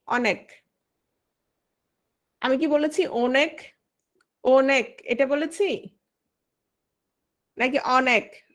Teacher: অ অ উচ্চারিত হয়েছে, অটা অই উচ্চারিত হয়েছে, এটা হচ্ছে বিবৃত উচ্চারণ